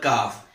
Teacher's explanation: جو آپ کا ہارڈ جو پیلٹ ہے جس کو ہم لوگ سخت تالو کہتے ہیں، جب آپ اپنی زبان کی جڑ کو تھوڑا اس کے ساتھ ٹچ کریں گے تو پھر یہ کاف ادا ہوگا